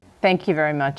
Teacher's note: The TH in thank involves the tongue tip creating friction against the top front teeth.